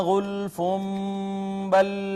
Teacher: با نے ما قبل نون تنوین کو چھوٹی میم سے بدل دیا اقلاب